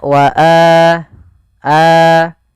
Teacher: baik itu Alif wau atau ya maka itu kita namakan dengan mad badal panjangnya adalah dua harakat sebagaimana Mad Thobi'i